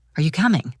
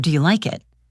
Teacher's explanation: In English, our voice will usually rise in pitch at the end of a yes or no question.